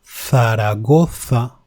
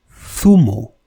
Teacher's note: Theta. This phoneme is not strongly pronounced. It is not z. It is th, like in Zaragoza, which is the name of a city, or zumo, which means juice.